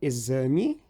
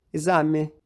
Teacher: Eu sou bem ruim fazendo esse som também, mas é um som mais central. É como um i, porém mais central, com a língua mais no centro da boca.